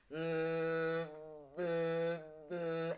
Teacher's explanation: and this happens because when we close our mouths The Voice the air flow is forced through the nasal tract because the mouth is closed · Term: hypernasal